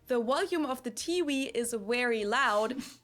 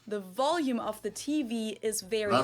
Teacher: So then it oftentimes happens that Germans will pronounce both Ws and Vs as the English W